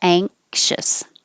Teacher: it's not the N made in the front. It's the NG combination made in the back. So ang, like you're going to say angle, but don't release the G.